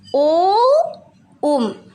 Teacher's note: ह्रस्व स्वरों के उच्चारण से तिगुना समय लगता है